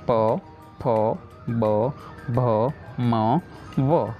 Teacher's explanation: हम बिना लिप्स को टच किए इसे नहीं रीड कर सकते। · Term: ओष्ठ